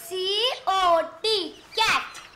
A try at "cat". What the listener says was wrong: C-O-T नहीं बेटा, C-A-T cat।